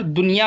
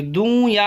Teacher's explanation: دنیا میں نون اور یا آ گیا تو ہم یہاں پر دنیا پڑھیں گے، دوں یا نہیں پڑھیں گے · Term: اظہار